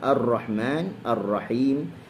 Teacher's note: Maka kena ikhfakan takrirnya, kena kurangkan sedikit takrirnya. Wa tashdidahu, dan tasydidnya mufakhaman dalam keadaan tafkhim lah. · dia hujung lidah tu dia kembali birra mukarraran beberapa kali lah, maknanya dia bergetar